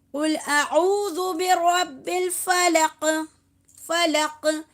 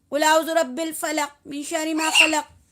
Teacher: قاف کے اوپر قلقلہ کریں گے کیونکہ قاف حروف قلقلہ ہے یہاں پہ